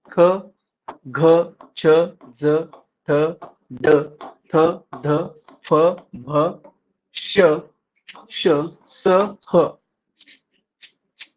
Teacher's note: सास अधिक मात्रा से निकलती है महाप्राण व्यंजन कहा जाता महाप्राण इन व्यंजनो मे हकार जैसी ध्वनी विशेष रूप से रहती है प्रत्येक वर्ग का द्वितीय चतुर्थ व्यंजन वर्ण तथा समाप्त उष्म वर्ण